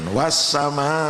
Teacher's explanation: Bacaannya panjang 5 harokat, berarti 5 hitungan. · Ini dibaca panjang karena ada mat bertemu hamzah dalam satu kalimah. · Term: mat wajib muttasil